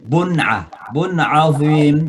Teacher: tanwin ketemu dengan ain, dibaca dengan izhar, jelas cara bacanya